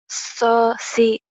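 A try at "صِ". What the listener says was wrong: Shod ini bukan to.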